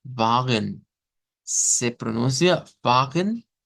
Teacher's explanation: se pronuncia vagen recibiendo la acentuación en la a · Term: sílaba tónica